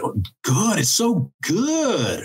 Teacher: we use a kind of a fourth tone in English. So if you want to say that something's really good, you'll say, oh, good, it's so good, right?